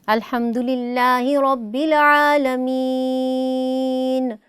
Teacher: چونکہ ہم اس کو ساکن کر رہے ہیں نون کو، تو اس لیے ہم مین پر تھوڑا اس میں مد کا اضافہ کر رہے ہیں نون کو سکون عارضی دینے کی وجہ سے۔ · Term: مد عارض